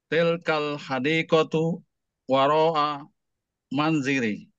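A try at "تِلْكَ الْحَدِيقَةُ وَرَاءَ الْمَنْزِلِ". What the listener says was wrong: Ibu-ibu, mohon maaf, apakah ibu-ibu mendengar membaca alif lam di kata terakhir enggak? Lebih hati-hati lagi ya Pak, mohon ya.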